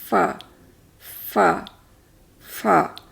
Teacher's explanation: اور اس کی ایک خصوصیت اور کیا ہے کہ جب ہم فا کہتے ہیں کیسے ہوتا ہے کہ ہم جب لگاتے ہیں اپنے کنارے اس کے اوپر کے دانتوں کے نیچے والے ہونٹ میں، تو دانتوں کے درمیان سے سانس کی ہلکی سی آواز یا پھونک نکلتی ہے، تو اس آواز کا بہاؤ جاری رہتا ہے، سانس رکتی نہیں ہے جب فا ہم کہتے ہیں